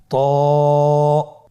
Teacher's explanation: জিহ্বার আগা সামনের উপরের দুই দাঁতের গোড়ার সঙ্গে লাগিয়ে উচ্চারিত হয় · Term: মোটা হারাফ